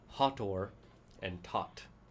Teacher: all TH sounds in Egyptian were a silent H and only made a T sound